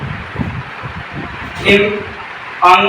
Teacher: अंगा का उच्चारण स्थान कंठ भी है, नासिक भी है। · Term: नासिक व्यंजन